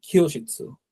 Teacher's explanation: জাপানি ভাষায় কয়ের উচ্চারণ অনেকটা ক্ষয়ের মতো হয়, যদিও পুরোপুরি খ না, তারপরও ক্ষয়ের কিছু একটা উচ্চারণ আসে।